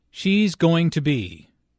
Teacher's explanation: Notice how this is pronounced like gonna be. Instead of 4 syllables, going to be, there are 3 syllables, gonna be.